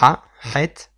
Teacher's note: ça vient du fond de la gorge, et il faut appuyer un peu au fond de la gorge pour exprimer ce son, qui ressemble un peu à un dégoût, comme si on allait plus ou moins régurgiter.